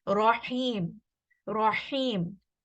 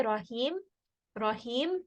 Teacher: So for example, also in the word rahim, rahim, ha, this is from the middle of the throat.